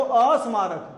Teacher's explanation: स्वर का आगम हो गया है ना गलत आगम हो गया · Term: स्वरा आगम संबंधी दोष